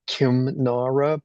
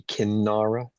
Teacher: I think the first one is an anusvara, so it's Kimnara, but then if you pronounce it, the anusvara gets changed to the corresponding nasal, so it would be Kinnara.